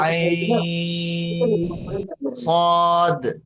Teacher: یہاں پر یائے لین ہے، اس کے بعد اس کا جو نون ہے سکون ذاتی ہے